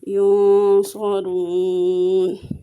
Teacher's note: نون میں غنہ کریں گے لیکن نون اپنے اصلی مخرج میں چھپ جائے گا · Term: اخفا